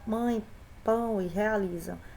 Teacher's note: no ditongo nasal, ele passa não só pela boca, mas também pelo nariz